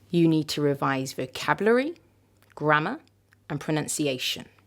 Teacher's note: hopefully you can hear that my voice went up with each of these words and it went down at the end